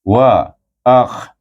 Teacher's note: sambung a Hamzah dengan Kha hujung halkum daripada pangkal halkum pergi kepada hujung halkum wa akh ro tebal tahkim ro naikkan lidah kita ke atas